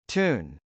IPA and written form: tˈun (tune)